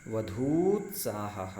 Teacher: यहाँ देखिए धा में बड़ा ऊ है, आगे उत्साह का छोटा ऊ है, ह्रस्व ऊ है, तो दीर्घ ऊकार और ह्रस्व ऊकार इन दोनों ऊ को जब हम मिला देते हैं तो दीर्घ ऊकार हो जाता है